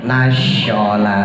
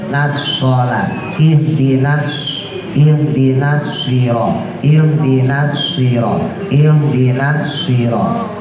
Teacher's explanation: jadi kalau sol yang keluar suara siul namanya taswir